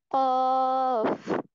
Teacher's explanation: कॉफ में हम क्या करते हैं कि जुबान, हमारी जो जुबान की जड़ है उसको कौवे के मुत्तसिल तालु, यानी जो कौवे का फौरन बाद तालु है उसके साथ हम लगाते हैं। · उसमें हम क्या करते हैं कि जुबान की जड़ को जो कव्वे के करीब तालु है उसके साथ लगाकर बारीक आवाज में पढ़ेंगे।